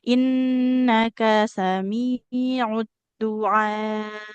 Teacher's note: Hamzahnya karena di akhir ya huruf terakhir dalam ayat itu maka jadi sukun. Hamzah punya sifat syiddah atau tertahannya suara. Jadi ditekan. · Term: huruf hamzah